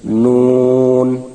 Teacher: উচ্চারণ সময় ঠোঁট গোল হবে এবং জিহ্বার আগাটা উপরের তালুর সঙ্গে লাগবে, নুন। 10 নম্বর মাখরাজ, জিহ্বার আগার পিঠ তার বরাবর উপরের তালুর সঙ্গে লাগাইয়া র, র।